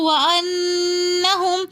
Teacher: وَأَنَّهُمْ میں نون مشدد again repeat ہو رہا ہے تو وَأَنَّهُمْ ہم اسی وجہ سے یہاں پر غنہ کر کے پڑھیں گے